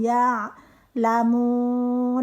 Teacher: ain dari tenggorokan belakang